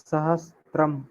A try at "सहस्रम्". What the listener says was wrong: सहस्रम स्रम सहस्रम त्रम नास्ति सर स्र स्र सहस्रम सहस्रम